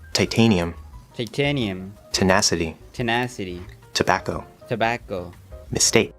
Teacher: So there is a soft T sound, which is unaspirated.